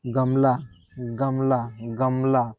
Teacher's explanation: इसको अगर हाथ गले पे रख के बार-बार आप पढ़ेंगे, उच्चारण करेंगे तो आपको वाइब्रेशन फील होगा। · हाथ गले पर रखकर उच्चारण करने पर कंपन महसूस होता है। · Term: सघोष